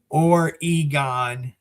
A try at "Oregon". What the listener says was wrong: Hey, you almost pronounce it like, the spice that you use.